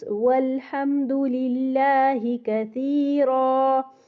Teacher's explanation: یہاں پہ للہ میں زیر کی وجہ سے لام باریک ہو جائے گا